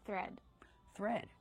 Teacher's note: we have the th making the voiceless sound with air plus the r